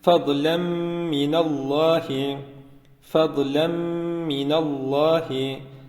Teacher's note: şeklinde değil feden minallahi şeklinde tenvinden sonra mim harfi olduğu için tenvinde bulunan nun harfini Mim harfine katarak Mim harfini şeddeli bir şekilde okuyacağız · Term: idğam mal gunne